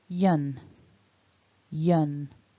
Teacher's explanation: And then we've got that y sound. So a y, a weak schwa, and a n together becomes yun